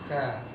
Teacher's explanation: Ka, ya, bukan ka, tapi ka dengan sifat hamasnya itu. Ya, ada aliran udara yang keluar.